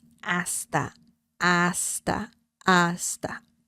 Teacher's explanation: the H sound in Spanish is mute, so there's no sound.